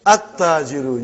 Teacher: You did not pronounce lam. Why you did not pronounce? Because it is sun letter.